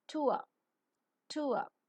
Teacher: diphthong is falling centering and a narrow Glide or a short Glide